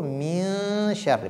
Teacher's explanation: il ne faudrait pas faire apparaître la lettre nun. Donc, la prononciation de nun ne doit pas apparaître. Ne dites pas min, mais plutôt min sharri, parce que c'est ikhfa. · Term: al-ikhfa